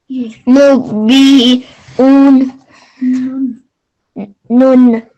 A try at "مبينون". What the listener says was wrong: ابھی اس میں نون پہ بھی آپ نے تھوڑا سی آواز لمبی کر دی.